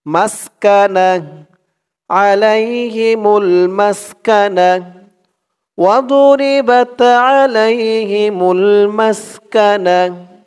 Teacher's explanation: থামার সময় যদি গুলতা থাকে সেই গুলতাটা হা হয়ে যায়